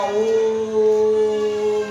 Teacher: जहाँ वही स्वर के बोलने में अधिक समय लगता है, जैसे ओम है ना, इसमें ओ प्लुत है। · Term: प्लुत स्वर